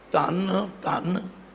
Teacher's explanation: ਪਹਿਲੇ ਧੰਨ ਨੂੰ ਥੋੜ੍ਹਾ ਜਿਹਾ ਪੋਲਾ ਬੋਲਣਾ। ਜਿਸ ਧੰਨ ਦੇ ਤਦੇ ਤੇ ਟਿੱਪੀ ਹੈ ਉਹਨੂੰ ਥੋੜ੍ਹਾ ਜ਼ੋਰ ਦੇ ਕੇ।